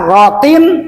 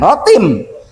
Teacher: Rotin jangan rotim sebab ini idhar tanwin kasrah ke depan ada hamzah